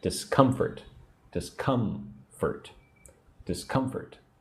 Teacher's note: Put the emphasis on syllable 2.